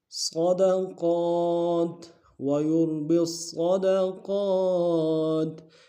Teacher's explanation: ادا کریں گے، با کو آگے صاد کے ساتھ ملانا ہے، صاد موٹا ادا کریں گے، صاد کے اوپر تشدید زور دیں گے اور آگے قاف کے اوپر کھڑا زبر ہے ایک انداز میں